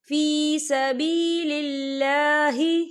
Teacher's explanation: یہاں اللہ کا نام باریک پڑھا جائے گا کیونکہ اللہ کے نام سے پہلے زیر ہے۔